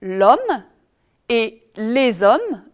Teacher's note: Si le H est muet en revanche, comme par exemple dans les hommes, là, il faut faire la liaison.